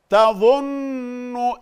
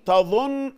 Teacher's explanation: النون هنا مشددة لازم تاخد حركتين غنة